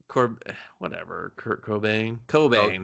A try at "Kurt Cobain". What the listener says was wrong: Kurt Cobain. You're really emphasizing the wrong syllables of his name.